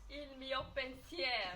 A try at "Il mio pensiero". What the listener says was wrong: Non, vous oubliez le N.